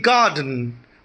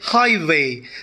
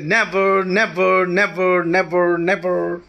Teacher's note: So in a trochaic meter, the first syllable is always stressed.